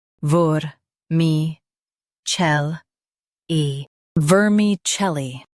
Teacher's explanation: Stress chel and keep li light.